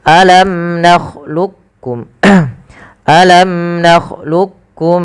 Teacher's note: ada dua ada dua pendapat yang pertama dengan Idam Kamil ya memasukkan langsung huruf Kaf kepada huruf kafnya secara utuh